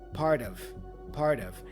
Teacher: The T for part, again, flap sound, which joins with of, part of. And the vowel O for of also has a schwa sound, so part of.